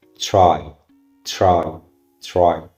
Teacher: It's between t and ch sound.